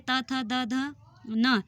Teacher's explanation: त, थ, द, ध, न दांतों को स्पर्श करके निकलती है